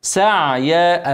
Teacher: ابين العين من غير ما اتكلف اسكنها مرققه